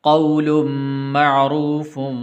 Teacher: واو حروف لین میں سے، اس لیے اس کو لمبا نہیں کریں گے